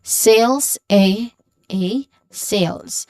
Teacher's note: And then you end with a buzzing sound, which is the letter Z sound, which is the voiced sound.